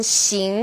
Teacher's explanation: this sound is somewhere in the middle of sh and S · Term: X